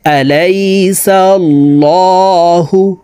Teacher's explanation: প্রিয় দর্শক, এই আল্লাহ শব্দের আগের হরফে জবর আছে, এই কারণে এই লামকে ল বলে পড়ব, অর্থাৎ মোটা করে পড়তে হবে।